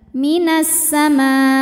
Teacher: jadi mimnya panjangin minasama ujungnya agak dihentak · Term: mad wajib